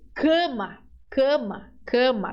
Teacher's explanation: Fazemos uma nasalização do a